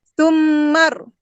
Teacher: Mim yang ada syaddah ni kita wajib dengung.